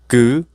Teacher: the root of the tongue has blocked the throat